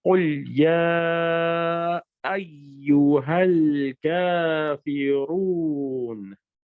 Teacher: नून की आवाज आखिर में आनी जरूरी है, नून साकिन हो जाएगा लेकिन इसकी आवाज जरूर आएगी।